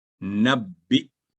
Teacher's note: नब्बी, ये पहले ही सुकून की अलामत है हमजा पर, तो हमजा की आवाज के साथ पढ़ा जाएगा नब्बी, झटके के साथ